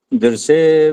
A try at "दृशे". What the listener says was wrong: ठहरो ठहरो, दृश्य जो श है ना, ये उच्चारण थोड़ा कम रहता है। स आता है आपका उच्चारण, स। हाँ ये स आ रहा है, स नहीं आना चाहिए वो आपको बोलना आता है शलगम?